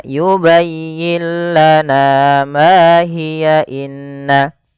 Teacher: Tapi kalau kita lanjut pada lafal hiya, ini dia tidak jadi mad tabi'i lagi, tapi menjadi 1 harakat saja.